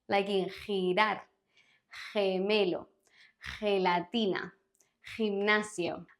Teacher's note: we have the guttural sound of the G with your throat